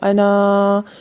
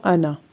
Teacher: ہے، جس جگہ انا کے اوپر گول نشان ہوگا اس جگہ اس انا کے زائد الف کو وقف کی صورت میں پڑھا جائے گا اور وصل کی صورت میں نہیں پڑھا جائے گا ، یعنی سانس ٹوٹ جائے گا تو انا، اور سانس نہیں